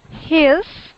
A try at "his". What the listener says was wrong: So sometimes you say it like an E, but I wanted it to sound like an I. His.